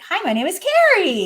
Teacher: at the end of a statement we go up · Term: up talk